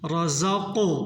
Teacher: قاف کو جھٹکے سے ادا کرنا ہے